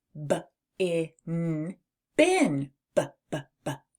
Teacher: This is also known as a bilabal plosive sound, where your lips come together and release a little burst of energy. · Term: B sound